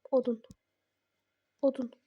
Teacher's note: odun sözündə o u. Bunun ikisi də qalındır da. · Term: ahəng qanunu